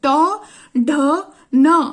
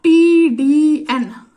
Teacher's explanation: surface is quite rough and is covered with the little ridges sounds made with the tongue coming in contact with the ridge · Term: alveolar ridge